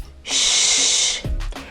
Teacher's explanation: the SH sound is a voiceless sound so that means that your vocal cords are not involved in the sound if you put your hand on your throat when producing this · What you'll notice is that my lips are moving forward, almost like I'm puckering up, like giving a kiss, in order to make this sound.